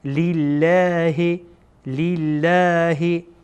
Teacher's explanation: اینجا لام جلاله باریک خوانده میشه. چرا؟ چون لامی که ما قبلش آمده زیر داره.